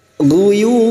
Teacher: ujungnya kita pantulkan karena terdapat huruf ba di akhir kalimah yang dibaca waqaf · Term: qqalah kubro